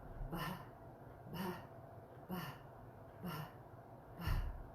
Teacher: it's pronounced with a little puff of air